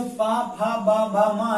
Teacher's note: जब हम उच्चारण करते हैं तो हमें अपने होठों यानी ओठों को मिलाना पड़ता है, यानी ओठों की जरूरत पड़ती है दोस्तों। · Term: ओष्ठ व्यंजन